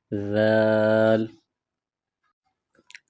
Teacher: اس حرف کی ادائیگی میں زبان تھوڑی باہر نکالیں گے